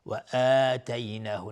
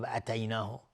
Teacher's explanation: آتینا اینجا مد بدل هست، به مقدار 2 حرکت کشیده میشه